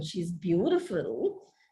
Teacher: you can say the same thing with a falling rising tone which conveys a different kind of an attitude she's beautiful a falling rising tone she's beautiful but dot dot